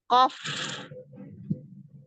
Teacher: Kof pangkal lidah bertemu dengan tulang yang lunak. Ya, langit-langit yang lembek.